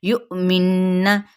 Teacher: یہاں پہ جھٹکا دیا جائے گا، پھر غنہ